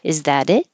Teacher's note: it and the t turns into a d is that it you don't hear the T in that at all